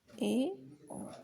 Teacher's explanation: अर्धसंवृत में मुंह द्वार जो है आधा बंद रहता है, इसमें खुलता नहीं है, इसमें आधा मुंह बंद रहता है